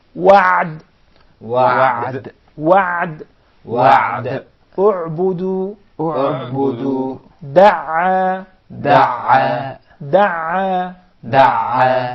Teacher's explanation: The Ayn along with the Ha or the Ha come from the middle of the throat.